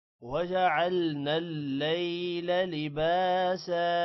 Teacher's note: لام کے بعد یا ہے تھوڑا سا لمبا کریں گے لا کو لمبا نہیں کرنا